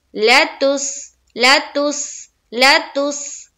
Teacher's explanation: आगे चलिए, लाम को जल्द अदा करेंगे, लाम के ऊपर क्या है, जबर है, ला तुस, सीन के ऊपर क्या है, जज्म है, और जज्म वाले हर्फ को हम पीछे वाले हर्फ से मिलाते हैं, यानी कि ता को सीन से मिलाएंगे, तो लेतुस, लतुस लतुस लतुस, सीटी की सी आवाज निकलेगी यहाँ पर सीन में